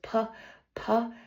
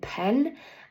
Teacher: Our lips closed. The manner of articulation is that it stops airflow and it is an unvoiced sound.